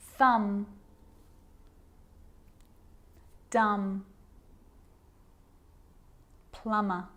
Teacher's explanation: i'm not pronouncing the b i'm just pronouncing the m consonant sound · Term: silent